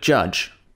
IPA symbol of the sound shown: dʒ